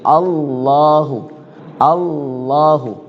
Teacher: kalau ketemu fathah jadi tafkhim atau dia sendiri kalimat Allah lafzul zalalah menjadi tafkhim